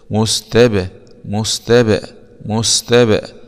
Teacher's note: باء سكون مع القلقله لان الباء من حروف القلقله